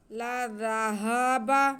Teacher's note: لام ذال ہا با، چاروں لفظوں پہ زبر ہے، اس لیے کسی کو بھی کھینچنا نہیں ہے، صرف ہم نے دھیان رکھنا ہے کہ ذال میں سٹی کی آواز نہ آئے، بہت نرمی سے پیار سے ادا کرنا ہے۔